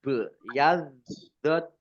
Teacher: bacaan kolkolah, dibaca memantul, ditampakkan pantulannya